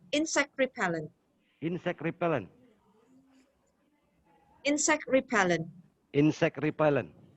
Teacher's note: put the stress on the first one